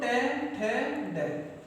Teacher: दांत, यानी हमारे जो मसूड़े होते हैं और जो हमारा तालु है उसके बीच का स्थान जो होता है वो मूर्धा होता है। यानी हमारी जो जीभ होती है वो तालु को स्पर्श ना कर मूर्धा स्थिति में चली जाती है, मतलब मुड़ जाती है।